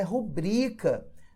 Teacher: a norma padrão é rubrica, né? A palavra é paroxítona.